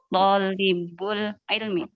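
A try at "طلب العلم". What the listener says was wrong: Tonya nggak panjang ya? Tolabu atau tolabil? Ya, idhofah ya. Tolabil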